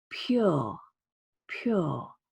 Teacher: There's no Y. We don't spell it P-Y-U-R-E, and yet we say a Y sound